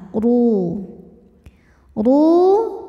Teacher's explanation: huruf ro dibaca secara tafkhim karena berharakat damah maka rnya ini tebal ru ru madnya ini Mad Thobi'i zohiri karena ada wau mati